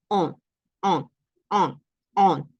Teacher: en el masculino decimos o o nasal